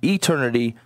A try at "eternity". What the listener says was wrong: Why'd you say it with a heightened E, like it's a website? Like eternity. Yeah, eternity.